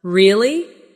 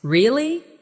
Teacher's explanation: when they are surprised, their voice goes up. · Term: intonation